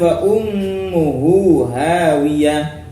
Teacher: Di sini adalah mad silah qosirah, ya. Panjangnya dua harakat.